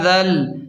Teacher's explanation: ذال کو نرم پڑھیں اور ذال کو لام کے ساتھ ڈائریکٹ ملائیں گے، یہ بیچ والا الف نہیں پڑھیں گے